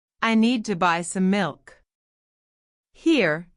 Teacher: Need and milk are stressed. The rest of the sentence speeds up naturally to fit around them. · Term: stress timed